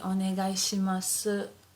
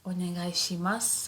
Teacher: So as if the u disappears